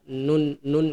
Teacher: samar jadi posisi lidah kalau kita menyebut huruf nun itu dia ujung lidah dia menempel di gusi bagian atas